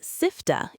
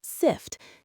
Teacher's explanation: be careful not to add extra vowels to words. You said sifta instead of a sharp sift. Cut that final sound off cleanly.